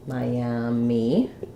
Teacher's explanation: So here we have 3 syllables. First syllable is stressed. We have the I diphthong like the word my.